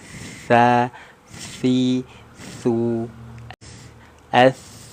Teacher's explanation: yang satunya dia tidak ada sifat ashafir tidak sifat attafasyi ya cukup ujung lidah kita sedikit dikeluarkan menyentuh ke gigi seri atas